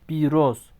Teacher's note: bakın İ uzadı, O da uzundur.